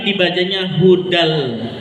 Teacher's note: Nggak dibaca hudan tapi dibacanya hudal. Lamnya yang dibaca. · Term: idgham bila gunah